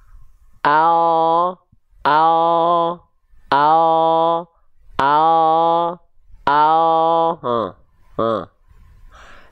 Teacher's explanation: Yang disentuhkan ke langit-langit hanya bagian ujung akhir lidah saja. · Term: huruf L